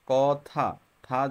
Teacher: থা যখন বলবা তখন দেখবে জিহ্বার আগাটা দাঁতের গোড়ায় লাগে, এই জন্য সেটা হচ্ছে দন্তধ্বনি।